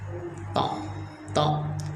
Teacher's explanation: to itu keluarnya dari punggung lidah itu yang menempel ke gigi atas sama langit-langit, ya, sehingga menebalkan suara. To dan to itu huruf qalqalah juga, karena qalqalah itu huruf sidah, huruf yang sidah itu huruf yang menahan aliran udara sehingga terbalik seperti qalqalah, memantul, ya.